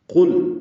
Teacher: جو پہلا حرف ہے قاف ہے، پر ہے، موٹا ہے اور لام باریک ہے،